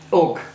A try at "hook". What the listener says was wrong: I think it sounds like you're saying hooks.